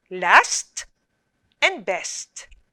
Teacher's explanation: the two consonants are blended but you can still hear the individual sounds of s and t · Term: final consonant blend